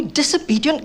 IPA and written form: ˌdɪs.əˈbiː.di.ənt (Disobedient)